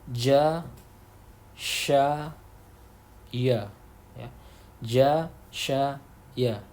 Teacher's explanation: Tengah lidah, kalau tadi pangkal lidah, sekarang tengah lidah bertemu dengan langit-langit mulut